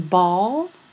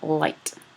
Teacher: the dark L, as it's called, in post-vocalic word final position · your tongue moves closer to the velar position, closer to the velum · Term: Velarized